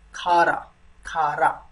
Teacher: It's aspirated ka sound, right? Ka and you make aspiration.